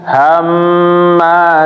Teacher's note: jadi mim harus ditahan ketika tasdid